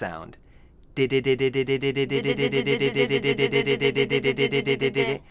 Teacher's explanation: you can just feel the very tip of your tongue on the gum Ridge there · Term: voiced D